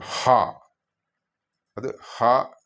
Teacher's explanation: ഘോഷശബ്ദം നമ്മുടെ ഒരുപാട് സ്ട്രെസ്സ് ചെയ്തുകൊണ്ട് ഉച്ചരിക്കേണ്ട ശബ്ദം